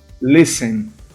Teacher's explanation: Mas olha só, a primeira sílaba aqui é tônica.